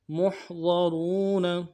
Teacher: لہم جندم محضرون، محضرون، میم کو ہا کے ساتھ ملانا ہے، ہا گہرائی سے ادا کریں گے، ضاد کو موٹا ادا کریں گے ، را کو واو کے ساتھ ملانا ہے، واو مدہ ہے،